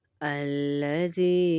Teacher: زال کو کھینچیں گے کیونکہ ساتھ یائے مدہ ہے۔